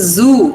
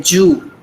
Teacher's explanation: Now z also is difficult for some of our people to pronounce. So instead of z, they substitute it with j.